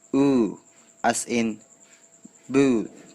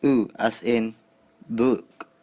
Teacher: In the high back part of the quadrilateral, we also have two vowels and they occur in a tense lax pair. The tense vowel is oo, as in boot, and the lax vowel is oo, as in book.